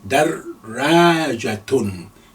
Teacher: You can see I'm pausing slightly before I say ra, lengthening alif. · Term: shadda